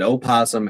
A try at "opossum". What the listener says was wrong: No, opossum is not pronounced opossum. It's still pronounced possum. The O is silent.